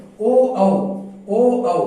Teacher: ओ औ बोलते ही कंठ और ओष्ठ का उपयोग हो रहा है ना, कंठ ओ औ बोल के देख लीजिए, कंठोष्ठ हो गया।